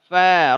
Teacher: Atrafus sanayal ulya ma'a batni syafati sufla. Ujung gigi atas bertemu dengan perut bibir bagian bawah.